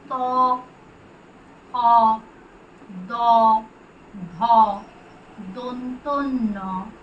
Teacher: আমরা নাড়াতে পারি শুধুমাত্র নিচের চোখটা, এবং আমাদের জিভ এসে স্পর্শ করে উপরের দাঁতের পাটির সামনে পিছনের অংশ। উপরের দাঁতের যে পাটি তার পিছনের অংশে জিভ স্পর্শ করলে উচ্চারিত হয় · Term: দন্ত বর্ণ